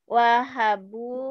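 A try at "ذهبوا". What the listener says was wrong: Bukan, ini bukan wa.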